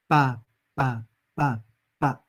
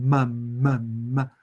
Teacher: Consonante bilabial con vocal abierta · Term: balbuceo reduplicativo